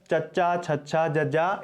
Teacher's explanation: ਇਹਨਾਂ ਦੇ ਉਚਾਰਨ ਵੇਲੇ ਸਾਡੀ ਜੀਭ ਹੈ ਜਿਹੜੀ ਉਹ ਸਾਡੇ ਤਾਲਵੇ ਨੂੰ ਛੂੰਹਦੀ ਹੈ, ਉਹਨੂੰ ਸਪਰਸ਼ ਕਰਦੀ ਹੈ।